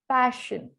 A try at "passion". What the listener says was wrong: pa instead of pay.